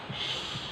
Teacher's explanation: We just need to raise the tip of our tongue towards the roof of the mouth. Then, your lips will protrude slightly · Then, your lips will protrude slightly, okay? Then, force the breath stream gradually between the blade of the tongue and the gum bridge of the two rows of the teeth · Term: sibilant sound, sound sh